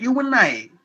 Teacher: and becomes an sometimes in a fast sentence like you and I. I don't say you and I. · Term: weak form